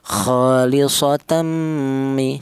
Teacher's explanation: Idgham artinya ee memasukkan ya huruf tanwin ini dimasukkan ke huruf mim atau menyatu atau melebur itu namanya idgham. di mana tanwin ini cara bacanya langsung disatukan ke huruf mim ini menyatu